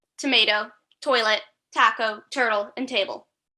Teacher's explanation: The image explains the letter T is a front, quiet, short, voiceless sound